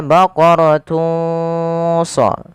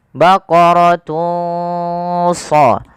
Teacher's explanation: samarkanlah suara dhammatainnya, suara unnya kepada huruf shad